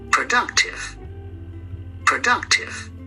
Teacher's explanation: Productive is read on the second syllable